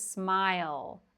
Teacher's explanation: The L sound, yeah, it's voiced. We can make sound on it.